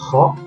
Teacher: kho ini keluarnya dari ujung kerongkongan suaranya